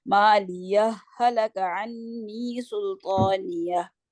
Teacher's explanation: यानी दोनों हा मर्ज होके एक मुशद्दद हा बनेंगे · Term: इदगाम